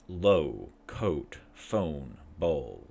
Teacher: The O sound is mid, back, tense, rounded. Pull tongue backwards in the mouth without raising or lowering it.